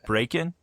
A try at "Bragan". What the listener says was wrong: break in. Yeah, with a G.